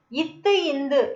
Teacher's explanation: மேல்வாய் பல்லோட அடிய நாக்கோட நுனி வந்து தொடுதலா பிறக்குது